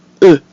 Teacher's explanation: So this sound doesn't quite exist in English, but we do have a similar sound, which is the double O in words like book. But the French E is more precise with a rounded mouth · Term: mute E